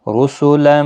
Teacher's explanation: را پور پڑھا جائے گا پیش کی وجہ سے